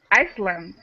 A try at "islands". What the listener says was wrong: Oh, islands. The S is silent. Islands.